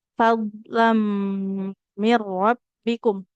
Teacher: Nah, hati-hati huruf dotnya jangan di pantulkan karena baju di toko enggak ada d ya, enggak ada huruf dadi enggak boleh kita pantulkan. Dengan makhraj tepi lidah menempel ke gigi geraham atas ya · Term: d sukun